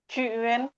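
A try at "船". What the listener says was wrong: Enggak, ini A-nya biasa aja. Ini U-nya biasa aja, nggak ada titik dua. Ya, ini U-nya biasa aja. A-nya biasa. Kayak Indonesia aja, kayak Indonesia aja. Cuan, pakai A.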